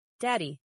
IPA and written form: ˈdædi (daddy)